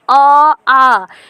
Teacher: आप बोलिए अ आ, ठीक है, कंठ से ही लगेगा, यानी गर्दन के पास जो कंठ है